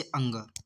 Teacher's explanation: अनुस्वार इसका उच्चारण केवल नाक से होता है